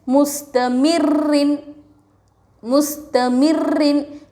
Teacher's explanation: را کے اوپر تشدید کو 2 بار پڑھتے ہیں، ایک بار پچھلے والے حرف سے ملا کر، ایک بار خودو سے. را کے نیچے 2 زیر، را کو باریک پڑھیں گے